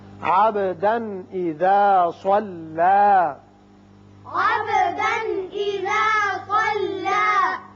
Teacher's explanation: تنوین کے بعد حمزہ بشکل الف ہے، یہاں اظہار حلقی ہوگا. وقت کی صورت میں صلی ایک الف کے برابر لمبا کریں گے.